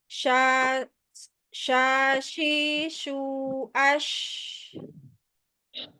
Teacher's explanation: tengah lidahnya dirasain nempel tuh ke langit-langit